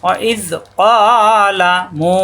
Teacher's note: ওয়াইজ দুই হরফ মিলে একসাথে নরম করে ওয়াইজ। ক জিহ্বার গোড়া থেকে একালিপ টান, কা হবে না